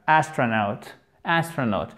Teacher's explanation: ne faites pas de H aspiré, ne faites pas de A long, c'est un A court, mais l'accent tonique est bien sûr la première syllabe.